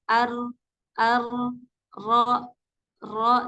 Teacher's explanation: eh satu sampai dua getaran saja ar ar ro ro dan ketika mengucapkan huruf ro itu memang harus ada getaran harus e ujung lidah Kina ini bergetar kalau misalnya enggak bergetar · Jadi keluarnya itu kurang lebih eh satu sampai dua getaran saja